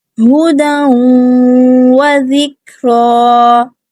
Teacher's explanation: ٹھیک ہے، اس کے بعد زال ہے، نرمی سے ادا کریں گے. کاف ساکن ہے، کلکلا سے بچائیں گے، کاف کو باریک رکھیں گے. را پہ کھڑی زبر ہے، 2 حرکات اس کو لمبا کریں گے اور پر اور موٹا پڑھیں گے، ہدى وذکرى.